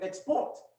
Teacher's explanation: the word export export you get the noun export but if if you move the stress to the syllable after the first the second syllable you get export which is a verb